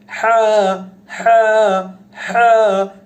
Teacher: আইন এবং হা মাখরাজটা যেখান থেকে উচ্চারিত হয়, হলকের মাঝখান থেকে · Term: ছোট হা